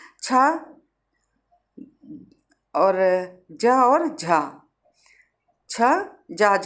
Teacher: इन व्यंजनों के उच्चारण में पहले स्पर्श फिर घर्षण की स्थिति रहती है, माने वायु जो मुख से निकलती है स्पर्श करती हुई और फिर घर्षण की स्थिति में रहती है, ये होता है छ, ज और झा, ये होते हैं स्पर्श संघर्षी।